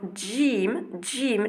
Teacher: jim, ça va être vraiment un son appuyé en haut, donc près du palais, mais surtout près des incisifs.